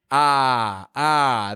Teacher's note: Starting with O-F-F, I'm giving a lot of power to the vowel there. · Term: short O